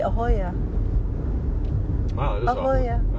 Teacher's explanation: it's very soft the vowels are all big and open